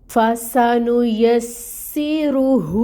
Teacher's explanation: ہا کو جو ہے ہم اقصا الحلق سے نکالیں گے